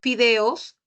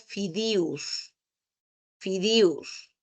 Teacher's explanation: en la región andina, ¿no? Por ejemplo, se intercambia los sonidos de la E, la I y la O con la U